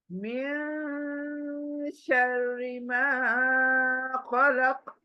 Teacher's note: तो ये नून को नाक में सिर्फ गुनगुनाना है, पढ़ना नहीं है, गुनगुनाना है। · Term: इक्फा